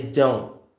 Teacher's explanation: we don't release the T here